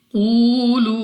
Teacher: कौफ हमारे पास मुस्तालिया में से है, तो हमने मोटा यानी मुंह और आवाज को खोल कर पढ़ना है। उसके बाद हमारे पास वाव साकिन से पहले पेश वाव मद्दा है, 2 सेकंड तक लंबा करना है।